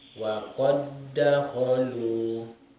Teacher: Kemudian huruf dal yang kedua berharokat atau berbaris. Jadi bacaannya seakan-akan dal yang kedua bertasydid. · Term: idgham mutamathilain